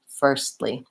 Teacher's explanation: I'm going to just move up from the S to the T, firstly, but I'm only going to release into the L. So I won't really have the firstly, but rather a stop T releasing into L.